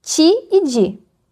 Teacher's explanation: O exemplo mais conhecido é a palatalização. Diante de I, as consoantes T e D viram africadas ti e di.